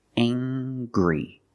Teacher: We use the nasal sound ng plus the hard g.